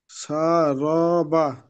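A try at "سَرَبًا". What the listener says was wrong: র টানা যাচ্ছে র টা না টেনে বলেন স্পিড বলেন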